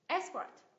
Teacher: Sự xuất khẩu. Hai âm tiết. Nhấn vào tiết thứ nhất ạ.